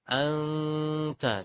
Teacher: Contohnya nah di situ gunanya sudah hilang kalau ditutup hidungnya, berarti sudah masuk ke gunnah. Anta, jadi selain membentuk suara nun samar juga masuk ke dengung, ke hidung ya.